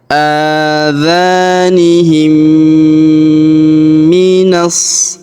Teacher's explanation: maka mim sukunnya melebur masuk ke huruf mim yang berharokat tasydid. Kita tahan dan kita tekan serta kita dengungkan 2-3 harokat.